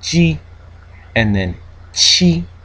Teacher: And then in here, when we kind of build up the air and then release it, we get G and then chi, which is the aspirated version of ji, and then when we make friction we get xi. Okay, so affricate unaspirated ji, affricate aspirated chi, and then fricative xi, all in the alveolo-palatal region. Okay, using the tongue to kind of force the air into that region. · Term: alveolo-palatal consonants